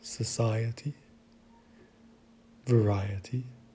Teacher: if we go back one syllable prior to the ety which we need to do here then we can see that the accentuation is found on that syllable